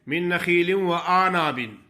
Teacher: جو عین کا لفظ ہے وہ بالکل غائبی ہو جاتا ہے